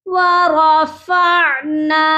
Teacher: نون کو ہم کھینچیں گے کیونکہ نون کے ساتھ الف مدہ ہے